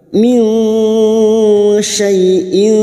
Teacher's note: Nun sukun bertemu shin ikhfa hakiki. Kita samarkan bunyi nun sukun dan mendengung selama 3 harakat.